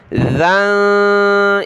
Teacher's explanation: नून साकिन कलरफुल है, नाक में आवाज़ पैदा करेंगे